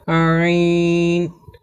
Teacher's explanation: আইন হরফকে কণ্ঠনালীর মধ্য থেকে একটু চেপে পড়তে হয়